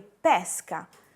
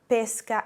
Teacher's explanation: si distingue tra la E aperta e la E chiusa